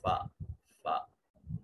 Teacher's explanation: اب دیکھیں اوپر والے ہونٹ اوپر رہ جائیں گے، نیچے والے ہونٹ کا درمیانی حصہ کے ساتھ جب اوپر والے دو دانت مل رہے ہوں گے تو اس وقت فا ادا ہوتا